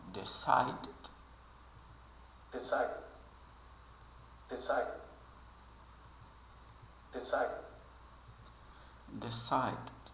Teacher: Ele mal pronuncia esse D final, mas ele de fato está ali. Ele só não é muito pronunciado.